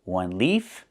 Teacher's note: One leaf with the F sound with no voice.